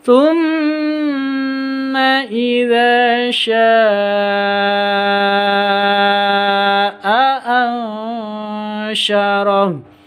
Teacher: Mad bertemu dengan hamzah di satu kata, mad wajib muttasil. Ansyarah nun sukun bertemu dengan shin, ikhfa hakiki. Samar disertai dengan dengung. · sya ini 5 ketuk atau 6 ketuk karena mad wajib. Mad bertemu dengan hamzah di satu kata, mad wajib muttasil.